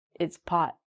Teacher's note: so when we say the word pot we don't say the T